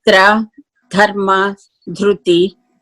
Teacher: when we pronounce tra, dharma, dhruti, our tongue touches the back of the teeth on the top. And there is another R sound when we pronounce rushi.